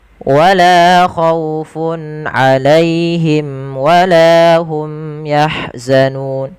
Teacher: Tidak boleh ada penahanan di dalam melafalkan mim matinya. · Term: idhar syafawi